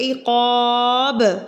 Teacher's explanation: बा साकिन हो जाएगा, तो हमने इसको क़लक़ला करके पढ़ना है